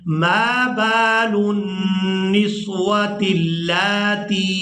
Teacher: ہم نے اس کھڑی زبر کی وجہ سے لام کو کھینچ کر ادا کرنا ہے